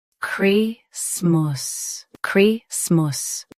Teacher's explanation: Stress. Chris. Keep smas soft, not sum as.